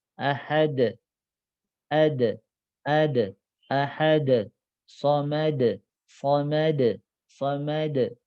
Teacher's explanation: Da itu ringan. Kenapa? Karena pangkal lidahnya tidak terangkat.